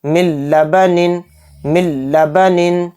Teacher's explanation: دیکھیے یہاں پر نون ساکن آ گیا، نون ساکن کے بعد لام آ گیا تو اس میں ادغام بلا غنہ کا قاعدہ ہو رہا ہے، اور ہم بلا غنہ کے اس کو جلد پڑھیں گے۔ نون سائلنٹ ہو جائے گا لام پر تشدید آنے کی وجہ سے، تو اس لیے یہ لام اس میم کے ساتھ مل کر پڑھا جائے گا، اور بغیر غنہ کے اس کو پڑھیں گے